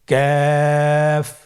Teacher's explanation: কাফের মাখরাজ হলো জিহ্বার গোড়া থেকে একটু আগে বাড়িয়ে তার বরাবর উপরে তালের সঙ্গে লাগিয়ে উচ্চারিত হয়।